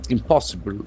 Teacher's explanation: accent falls on the second syllable